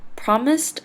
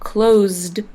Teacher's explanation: Both promised and closed have an S before the ed ending. However, promised has an S sound and closed has a Z sound. That's why promised has a T ending and closed has the D ending.